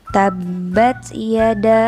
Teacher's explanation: huruf da di sini harus dibaca panjang sepanjang 2,5 alif atau 5 harkat. Jadi, setelah membaca huruf ba ditekan terlebih dahulu, kemudian ada huruf da yang harus dibaca panjang.